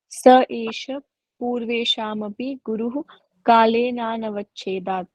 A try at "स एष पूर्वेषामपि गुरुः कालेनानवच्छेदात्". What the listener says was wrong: जी good.